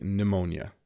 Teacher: if you have pneumonia another word where the p is silent you don't pronounce the P at the beginning it's simply pneumonia